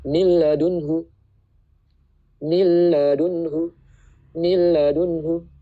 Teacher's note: Kita harus membaca dengan hukum idgham bila gunah. Nunnya itu tidak dibaca tapi langsung ke lam. Tapi nggak pakai dengung, cepat aja.